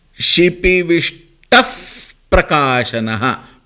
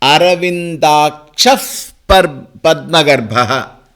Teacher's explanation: Now, in this case, the visarga followed by pavarga takes the form of f. Shipivishtaff prakashanaha.